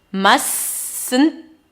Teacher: Must not, mustn't. I dropped the T of the must.